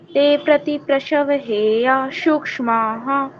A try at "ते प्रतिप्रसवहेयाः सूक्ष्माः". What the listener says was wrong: हेया सूक्ष्मा इकट्ठा बोल गए इसको थोड़ा सा आपको ये गैप दिखाना पड़ेगा कि ये दोनों अलग अलग वर्ड हैं ठीक है ते प्रतिप्रसव हेया सूक्ष्मा हा